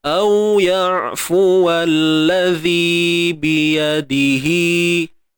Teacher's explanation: Dhi dua harakat mat asli. · huruf zal kena keluar hujung lidah sikit